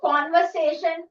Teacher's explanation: Conversation. No r sound. So conversation R is like silent